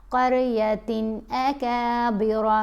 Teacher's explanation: جب نون ساکن یا تنوین کے بعد ان حروف میں سے کوئی حرف آ جائے تو ہم اظہار کرتے ہیں، یعنی ہم نے نون کی آواز کو ظاہر کر کے پڑھنا ہے. یہ جو تا دو زیر تن میں نون ہے نا اس کو ظاہر کریں گے اور جلدی پڑھیں گے، غنہ نہیں کرنا